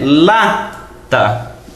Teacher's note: A forte é lata. Então, o lá é o mais forte aqui. É a sílaba tônica. Pode ver que ela não está acentuada, mas é a tônica.